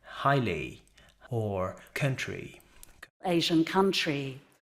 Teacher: In British English, it is present at the end of words, such as in highly or country, and a British person would very likely diphthongize, which means there would be a slight glide in that sound at the end of words, so that would sound like highly or country. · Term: fleece vowel